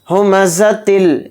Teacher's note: زا کو سخت اور باریک نکالیں گے